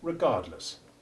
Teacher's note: the short e3 in the first syllable of regardless though not as completely devoid of stress as the last syllable is relatively unstressed compared with the second syllable